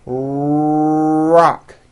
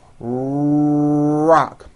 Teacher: notice how my lips are coming forward and my tongue moves back in my mouth, and I push out the R sound. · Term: American R sound